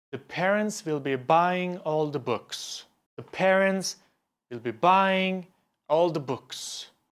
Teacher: you emphasize the words parents, buying, and books. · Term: content words